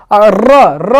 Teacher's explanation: प्रकंपित व्यंजन या लुंठित। र बोलने पर, उच्चारण करने पर हमारी जो जिह्वा है लड़खड़ाती है, इसलिए कंपन करती है और लड़खड़ाने होने के कारण इसे लुंठित व्यंजन या प्रकंपित व्यंजन कहते हैं।